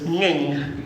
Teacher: NG is ng sound, and in Klingon that can come at the beginning of a syllable.